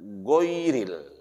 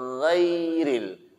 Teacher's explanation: Karena dia khalqiyah, bukan asyafatain. Bukan fungsi bibir yang mengucap gha. Ya. Saya jelasin seperti ini.